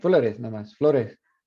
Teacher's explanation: Remember that long O just stays an O